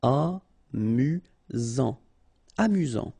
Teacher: Final T not pronounced. You've got only one S here between the vowels, so it's really this Z sound.